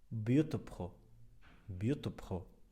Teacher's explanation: The consonant cluster is t, b, kh. However, the sound ta is emphatic, so the vowel isn't exactly a kasra. It's not I nor a damma, but somewhere in between.